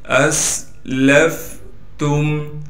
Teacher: اسلفتم، حمزہ کو سین سے ملا دیں گے اس لیے کہ سین ساکن ہے، سین کی سیٹی نکال کر پڑھیں گے۔ لام کو فا سے ملا دیں گے، فا ساکن ہے۔